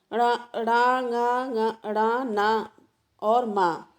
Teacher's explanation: प्रत्येक वर्ग के अंतिम वर्ण ण, ङ, ण, न और मा को अनुनासिक भी कहा जाता है, क्योंकि इनका उच्चारण मुख के साथ नासिका से भी होता है।